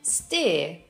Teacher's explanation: The next diphthong is the one in hear, or ear. It starts as I and it moves to a schwa. American English speakers simply say ear.